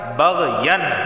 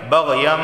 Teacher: لیکن اقلاب کا قاعدہ لاگو ہونے کی وجہ سے ہم میم کی آواز نکالیں گے